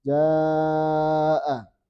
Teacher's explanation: Asalnya ja cuma 2, tapi ketika bertemu hamzah maka ini harus dibaca 4 atau 5.